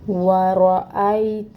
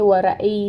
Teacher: پھر حمزہ ہے، حمزہ کو بھی ایک حرکت پڑھیں گے اور اس کو محقق ادا کریں گے